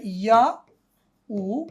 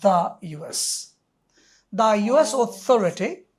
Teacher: No, দি ইউএস হবে না, কারণ হচ্ছে ইউ ইউ উচ্চারণ করতে ইয়া উ, এই যে ইউ and then এস, সো ইয়া একটা কনসোনেন্ট সাউন্ড, সুতরাং উচ্চারণের হবে দ্য ইউএস।